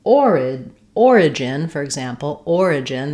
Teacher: that follows the same as order and organize, stressed on OR.